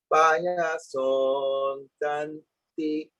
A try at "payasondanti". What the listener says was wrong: The so is elongating just a little bit more than it needs to, but that will come together as you practice.